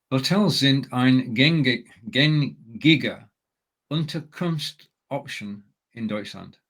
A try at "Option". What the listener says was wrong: Now, you just made the one common mistake of reading option and therefore reading it in English.